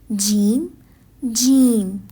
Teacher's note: جیم زبان کے درمیانی حصے سے ادا ہونے والا حروف ہے. زبان کا درمیانی حصہ جب منہ کے اوپر والی سطح سے ٹکراتا ہے تو جیم ادا ہوتا ہے اور جیم ایک سختی سے ادا کیا جانے والا حروف ہے.